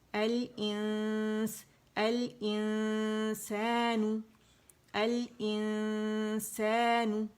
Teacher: Right away اخفا جو حرف اخفا ہے اس کے مخرج پہ جائیں گے، نون کو چھپاتے ہوئے غنہ کرتے ہوئے. ٹھیک ہے، اور 2 کاؤنٹ کا ہوگا.